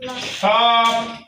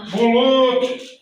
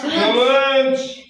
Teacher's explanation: Tələffüzdə isə bunlar öz kar variantlarından olacaq. Heç bir şəkilçi qoşulmadan kar variantlarında tələffüz olunacaq.